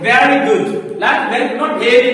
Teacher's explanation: Bottom lip and upper teeth, and here we create buzzing. Means there should be vibration while producing the sound of V. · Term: labiodental